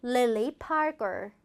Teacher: 성 부분을 조금 더 억양을 주어서 읽어주시면 좋겠어요. Lily Parker 이런 식으로 Parker를 조금 더 길게 해주시면 더 좋겠다라는 포인트까지 정리됐습니다.